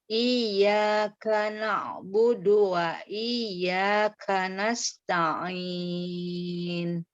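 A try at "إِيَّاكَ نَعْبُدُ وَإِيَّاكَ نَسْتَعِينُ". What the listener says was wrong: Berlatih lagi untuk sinnya juga kurang ya.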